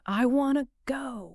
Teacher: the tongue just does a quick microscopic flick against the roof of the mouth. It doesn't stop the air, it just briefly interrupts it. This is called an aliolola tap or a flap t.